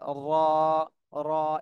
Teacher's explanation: জিব্বার আগার পিঠ উপরে তালুর সঙ্গে লাগবে, র, র, একটু মোটা আওয়াজে র, র।